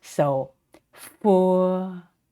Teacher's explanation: Sound relies on the friction between the teeth and the lip, and the sound is not aspirated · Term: f sound